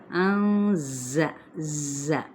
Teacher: جیسے مکھی کی بن بناہٹ ہوتی ہے ویسے ہی اس کی ساؤنڈ نکلے گی، ز اس طریقے سے، ٹھیک ہے۔ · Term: صفیر